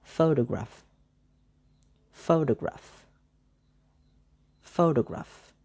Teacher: The first syllable is pho, that is stressed.